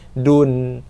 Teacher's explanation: Oleh kerana itulah maka nun mati ini ditandakan dengan tanda sukun di atasnya untuk menunjukkan bacaan izhar nun, bacaan nun yang jelas. Bacaan nun yang jelas, kita kena nyatakan, jelaskan bacaan nun, dan kita keluarkan sedikit saja bunyi dengung padanya, dengung yang tak sempurna. Dun, sekadar itu. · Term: izhar mutlak